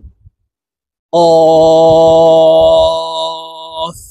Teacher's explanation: জিহ্বার গোড়া তার বরাবর উপরের তালের সঙ্গে লাগাইয়া উচ্চারণ করতে হবে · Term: কফ হরফ